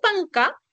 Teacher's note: cuando dices panca tu lengua se retrae como que se va hacia la parte de atrás